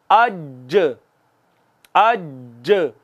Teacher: ज़बां का दरमियानी हिस्सा ऊपर तालू के साथ लगता है। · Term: जीम